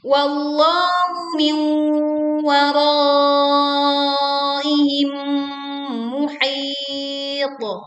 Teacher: tutup dengan bunyi pantulan pada to yang dibaca sukun karena wakof dengan suara yang tebal dan kuat